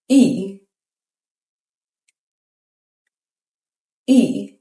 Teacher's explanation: English speakers often pronounce it like the Y in shy, but the Swedish E is a rounded front vowel. E E So, say E as in see, but round your lips like you're saying ooh.